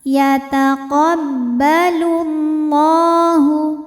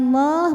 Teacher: lam pada lafaz Allah atau lam jalalah dibunyikan secara tafkhim sebab huruf sebelumnya berbaris dammah maka dibacanya ditebalkan.